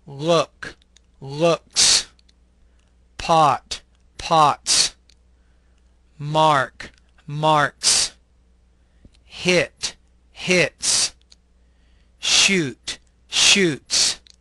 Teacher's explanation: the S is actually pronounced as an S sound without creating an additional syllable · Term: s ending